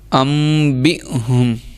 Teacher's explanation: حمزہ پہ جزم آ رہی تھی اس لیے ہم نے جھٹکا دیا ہے